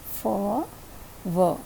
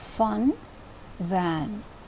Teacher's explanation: If you observe, when you say fa and va, the lower lip is touching the upper front teeth.